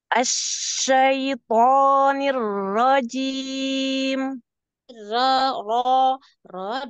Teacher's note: ro ro ro dicekungkan lidahnya